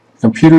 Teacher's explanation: Computer is a word that consists of 3 syllables. Unstressed, stressed, and an unstressed syllable.